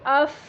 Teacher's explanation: فا میں جو ایک وہ ہوا سانس کی آواز ہے وہ واضح رہے گی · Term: ہمس